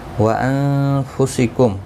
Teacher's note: نون ساکن کے بعد حروف اقفا کا فا اخفا حقیقی ہوگا، گنہ کے ساتھ پڑھیں گے